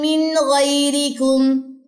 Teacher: نون ساکن کے بعد غین ہے، یہاں پہ غنہ نہیں کرنا